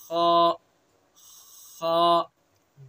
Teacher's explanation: अदना हल्क यानी हल्क का मुंह की तरफ वाला हिस्सा, ठीक है। इसको खा भी नहीं पढ़ेंगे, खे भी नहीं पढ़ेंगे, बल्कि जो इसका मखरज है वहां से अदा करेंगे तो सही हर्फ की अदायगी हो जाएगी।